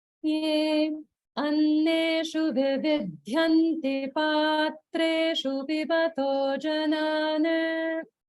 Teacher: you should have noticed the gap after ye and before anneshu